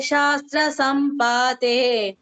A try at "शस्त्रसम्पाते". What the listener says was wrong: शस्त्र सम्पाते. शस्त्र सम्पाते. तत्र दीर्घः नास्ति.